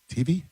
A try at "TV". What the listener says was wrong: TV. You say TV. You say it wrong. You say TV. You put the emphasis on the T, not the V. TV. TV.